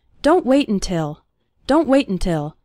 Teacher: we almost continue the word wait right into the n sound · when speaking fast the first syllable of until is barely pronounced